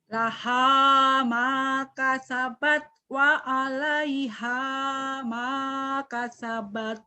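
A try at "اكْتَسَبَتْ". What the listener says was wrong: maktasabat bukan makasabat. Ada hamasnya ya.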